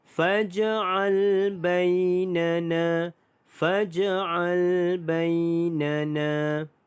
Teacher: Na yang kedua ini dipanjangkan 2 harakat kerana mad asli huruf alif